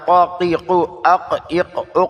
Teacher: اس کو زبان کی جڑ اور لہات سے ادا کرنا ہے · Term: قاف